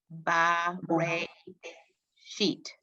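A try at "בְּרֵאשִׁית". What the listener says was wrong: Okay, it was very, very good, but I just want you to have the shva under the first, as a first letter. It's b or l, not ba.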